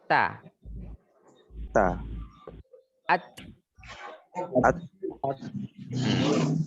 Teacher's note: sebagian ujung lidah kita nempelnya ke dinding belakang gigi